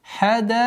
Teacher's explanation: Долгота в размере 4 огласовок, слитного, соединительной долготы. Хадаика. Обратите внимание, после долготы четкого произношения кесры.